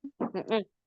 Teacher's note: jadi posisi lamnya itu langsung nempel ke gusi atas. Jangan dilengkungin ujungnya.